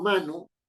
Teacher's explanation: pero si yo digo mano el tono predominante está en la sílaba ma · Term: sílaba tónica